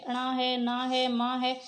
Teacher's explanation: लेकिन जो लास्ट के होते हैं ना, सभी जो वर्ग हैं, 5 वर्ग, इनके लास्ट के जो होते हैं, जैसे अणा है, ना है, माँ है, ये सभी नासिका से उच्चारित होते हैं